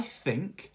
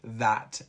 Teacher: Notice the different th sounds in think, voiceless, and that, voiced.